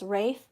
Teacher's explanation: the l in ralph r-a-l-p-h is silent and so it's actually pronounced rafe not ralph as in barf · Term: silent consonant